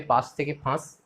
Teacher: অল্প প্রাণ থেকে মহাপ্রাণ হচ্ছে